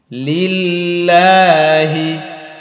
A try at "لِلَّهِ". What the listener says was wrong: লিল্লাহি লিল হবে না লিল জিব্বার ভিতরে রাখতে হবে বলেন